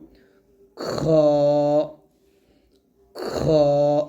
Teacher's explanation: খটা হলো গলার শেষ থেকে হবে, তবে খ এখানে দেখুন লেখা আছে মোটা হবে, উপরে একটু লেখা আছে মোটা হবে।